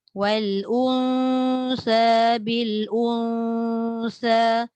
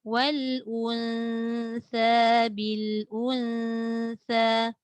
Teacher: Dia naturalkan balik bunyi nun tu sebab nun itu bersifat nipis.